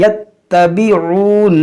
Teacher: यहाँ ता मुशद्दद है, इसको पढ़ेंगे दो बार